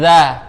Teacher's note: Sedangkan zal nggak punya sifat sofir, jadi nggak ada desis pas nyebutinnya.